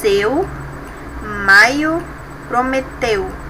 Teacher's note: Decrescente, composto de vogal primeiro e semivogal depois